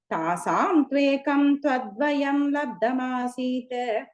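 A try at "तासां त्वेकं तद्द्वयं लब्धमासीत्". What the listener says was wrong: The third line, tad dvayam. Second time you said tvad, tad dvayam.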